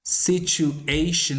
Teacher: situation is accented primarily on the third syllable